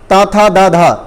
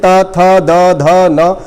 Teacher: इन सभी को बोलने में जीभ का अगला हिस्सा आपके दांतों पे जाकर लगना ही लगना है हर हालत में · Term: दंत व्यंजन